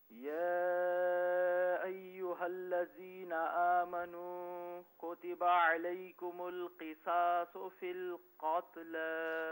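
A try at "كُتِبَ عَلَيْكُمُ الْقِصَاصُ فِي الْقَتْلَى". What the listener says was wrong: اچھا، یہاں پر ایک تو قصاص میں صاد کو پر کر کے پڑھیں اور قتل میں قاف کو پر پڑھیں. قصاص فی القتل.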